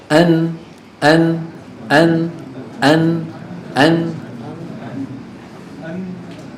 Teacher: لما نقول ان ان ان ان ان يحدث امراض الامر الاول طرف اللسان يصطدم مع ما يحاذيه من الحنك الاعلى ويصاحب ذلك يصاحبه يعني يكون معه صوت من الانف اسمه الغنه مجموع هذين الامرين يشكل حرف النون فليست النون الطرف اللساني لوحده